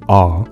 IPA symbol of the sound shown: a